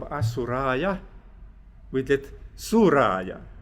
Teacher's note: the first syllable is dropped, so that from Asuraya, we get Suraya.